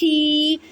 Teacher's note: ہا کو یا ساکن کے ساتھ ملائیں اور یا مدہ کا قاعدہ کریں، یعنی کہ ایک الف کی مقدار میں کھینچ کے پڑھیں گے۔ ہا کو حلق کے درمیان والے حصے سے ادا کرتی ہیں اور میم کو ساکن کریں کیونکہ آگے وقف کی علامت ہے۔